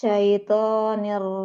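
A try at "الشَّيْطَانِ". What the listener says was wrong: To-nya tebalkan lagi. Syaitan.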